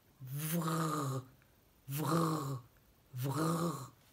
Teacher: elle met ses dents du haut en contact avec sa lèvre du bas et elle souffle en faisant du bruit je dis bien en faisant du bruit parce que sinon il